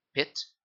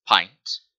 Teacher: of explaining this is by the vowels in pit and pint notice how pit is uh faster said than pint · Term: ultra short vowels